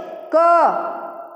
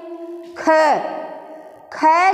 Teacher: क का उच्चारण होता है, अर्थात वायु बहुत कम निकलती है। · अब इसका उच्चारण करते हैं, ख ख जब हम बोलते हैं तो पूरी की पूरी सांस बाहर आ जाती है, ठीक है। यानी कि ख जब हम बोलते हैं ना तो जितनी सांस अंदर होती है सारी निकल आती है, यानी दोबारा अगर ख फिर कहना हो तो शायद सांस लेना पड़े, ऐसे हो जाता है ना। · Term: अल्प प्राण